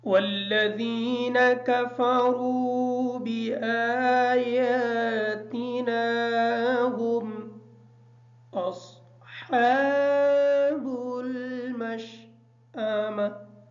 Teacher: والذین کی جو ذال ہے اس ذال کو نارمل پڑھیں گے۔ کفروا کی جو کاف ہے اس کاف کو باریک پڑھیں گے۔ واو ساکن ہے، واو کا ما قبل جو را ہے اس را کی حرکت پیش ہے، اس وجہ سے واو مدہ ہے، را کو تھوڑا سا لمبا کر کے پڑھیں گے تاکہ واو صحیح طریقے سے ادا ہو جائے۔